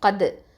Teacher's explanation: இந்த காஃப் ஃபத்ஹா வந்து ஹெவியாக ஓதணும். வாயை நல்லா ஓப்பன் பண்ணி சொல்லுங்கள், தஃஹீம் எழுத்து.